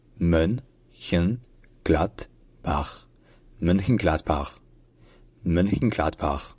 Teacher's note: c'est là qu'il y a l'accent tonique sur le glatt. Et en fait, en allemand, le D à la fin d'une particule se prononce te.